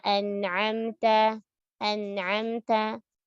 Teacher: Hamzah dulu baru ain. Dan tidak boleh ditebalkan hamzahnya.